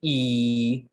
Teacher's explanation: all vowels are voiced so if you say ee you can feel your throat vibrating